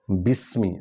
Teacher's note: سین سیٹی کی آواز نکلے گی۔ بے حرف شفوی ہے، یہ ہونٹوں سے نکلے گا۔